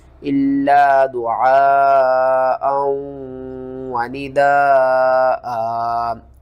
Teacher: کس طرح، آگے حمزہ کو ہم نے واو کے ساتھ ملانا ہے، یہاں پر ادغام کریں گے، اور دال کے ساتھ جو الف ہے اس کو آپ نے 5 الف کے برابر کھینچنا ہے، اور لاسٹ میں حمزہ کے اوپر 2 زبر ہیں تو ہم کیا کریں گے، اس حمزہ کو 1 الف کے ساتھ بدل کر پڑھیں گے وقف کی صورت میں